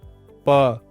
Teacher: प वर्ग का उच्चारण जब हम करते हैं तो प, देखिए होठों के द्वारा इसका उच्चारण किया जाता है।